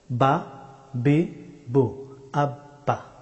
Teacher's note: উচ্চারিত হয় দুই ঠোঁট বন্ধ করে ঠোঁটের দুইটা অংশ থেকে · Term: বা হরফটি